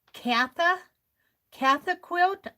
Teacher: The N in the word Kantha, C-A-N-T-H-A, is silent when you pronounce it.